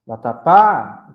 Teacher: Vatapá, então nós sabemos que o pá é a sílaba tônica. Desse modo, ela é uma oxítona, tá bom?